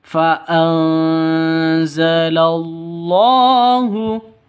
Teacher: sakinatahuai [Musik] faanzalallahu di sini ada nun mati bertemu dengan Zin nun mati bertemu dengan Za cara bacanya samar didengungkan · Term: ikhfa Hakiki